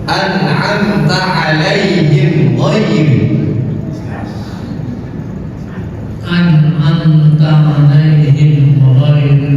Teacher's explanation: Jadi mimnya jelas dan tidak ditahan. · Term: Idhar syafawi